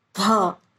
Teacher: हवा तीव्र गति से बाहर निकलती है, विथ फोर्स, फोर्स के साथ बाहर निकलती है।